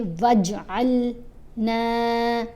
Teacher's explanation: आइन को लाम से मिलाएंगे और नून को लंबा पढ़ेंगे 1 अलिफ जितना